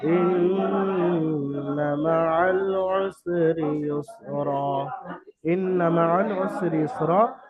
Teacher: এখানে নুন মুশাদ্দাদ ওয়াজিব আছে গুন্না, তো এখানে একালিফ পরিমাণ গুন্না হবে, ওয়াজিব গুন্না।